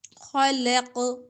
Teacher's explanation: خلقت قاف پر جزم ہے تو کلکلا ہوگا جھٹکا